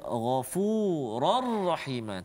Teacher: Dan juga contoh yang terakhir, Ghafurar Rahim, tanwin baris dua di atas bertemu dengan huruf ra, Ghafurar Rahim, kan? Jadi tanpa dengung, masukkan terus bunyi tanwin ke dalam huruf ra tanpa dengung. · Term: idgham bila gunnah